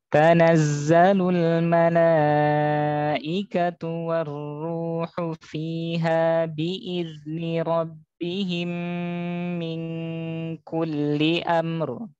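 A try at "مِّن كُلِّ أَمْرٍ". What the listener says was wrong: Kalau amr itu nanti kelamaan. Bertas jadinya. Jadi gini caranya amr. Kalau mau dieja ya. Amr. Amr. Beda. Kalau syiddah amr. Itu kalau syiddah. Kalau rokhwah kalau mengalir amr. Nah, kalau bertasydid kayak jantung amr. Jadi mesti dibedakan ya. Yang benar yang pertama amr. Yang salah 3 ya. Yang pertama tadi kalau disidahkan, kalau ditekan amr cepetan.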